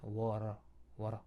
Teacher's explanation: 우리가 워터 발음할 때 분명히 워터 이렇게 플랩은 나오죠.